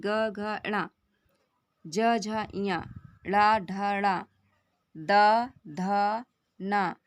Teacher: जब प्राणवायु में प्रकंपन होने के कारण गूंज उत्पन्न होते हैं, उन्हें हम क्या कहते हैं, घोष वर्ण कहते हैं।